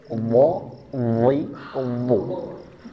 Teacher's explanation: bukan hanya pangkal lidahnya saja tapi lidah yang tengah agak maju sedikit pun dilengketkan ke langit-langit mulut